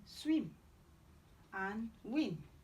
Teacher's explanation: We have w, bilabial semivowel, as in swim and win.